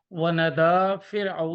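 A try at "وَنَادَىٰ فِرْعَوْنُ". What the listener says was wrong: ونادا نا کو لمبا کریں نہیں فرعونو ہے نا، فرعون فاعل ہے یہاں پہ،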